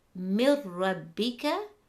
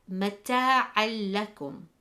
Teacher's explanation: You will notice for these letters that there is no GHUNNAH, but the letters will have the Shadda. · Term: Idghaam without GHUNNAH